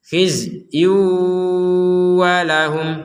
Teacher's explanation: Nah, di sini ada tanwin bertemu wawu, ya kan? Dhammatain bertemu wawu, maka kita memasukkan kepada huruf wawu disertai dengungan. Khizyu walahum, huruf zainya jangan dipantulkan.